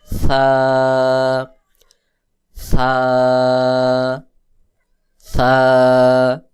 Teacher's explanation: সা বলতে হবে জিহ্বার আগা সামনের উপরের দুই দাঁতের আগার সঙ্গে লাগাইয়া পাতলা করে উচ্চারণ করতে হবে এবং বাহিরের দিকে বাতাস বের করতে হবে।